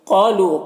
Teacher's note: قالوا، قاف یہ حروف مستعلیہ میں سے ہے، اسے پر پڑھیں گے، اور الف سے پہلے قاف کے اوپر زبر ہے تو الف مدہ ہوا، اسے ایک الف کے برابر کھینچ کر پڑھیں گے